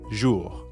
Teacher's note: the R at the end of jour doesn't really sound like an English R. You should feel that R in your throat. Jour. Yeah, almost like you're gargling or clearing your throat.